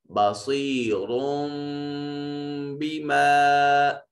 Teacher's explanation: اس را کے اوپر پیدا ہونے والے نون تنوین کے نون کو چھوٹی میم سے بدل دیں گے اور را کو میم سے ملا کر پڑھیں گے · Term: اقلاب